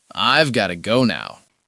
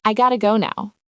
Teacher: The have disappears entirely, and got to assimilates into gotta.